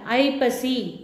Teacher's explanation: ஐ என்பது தனியாக வந்தால் இல்லை சொல்லுக்கு முதலில் வந்தாலும் ஐ ஆனது 2 மாத்திரை தன்னுடைய 2 மாத்திரை அளவில் ஒலிக்கும்.